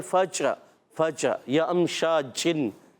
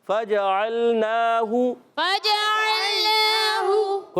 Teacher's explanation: چھ کی آواز نہیں آئے، اہل عرب نہیں ادا کرتے